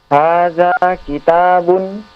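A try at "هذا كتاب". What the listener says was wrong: Intonasinya jangan intonasi pertanyaan. Ulang sekali lagi.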